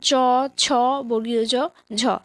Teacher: ঘৃষ্ট ধ্বনি হচ্ছে যে সমস্ত ধ্বনিগুলো উচ্চারণ করতে গিয়ে আমাদের জিহ্বা প্রায় ঘর্ষণ করে ওঠে